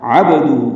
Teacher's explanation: با ساکن پہ قلقلہ ہے، با کو ہلا کر ادا کریں گے